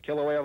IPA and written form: ˌkɪləˈweɪə (Kīlauea)